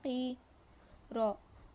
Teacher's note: قوف زبان کی جڑ کو چھوٹی زبان کے پیچھے کے حصے سے لگانے پر ادا ہوتا ہے. قوف پر زیر ہے تو نہیں کھینچیں گے.